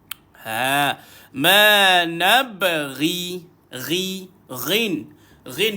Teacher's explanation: duduk dekat hujung kerongkong dekat dengan anak tekak kita